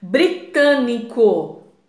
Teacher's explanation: proparoxítona a sílaba tônica é a antepenúltima